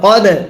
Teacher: দালে যদি সাকিন হয় কলকলা করতে হয়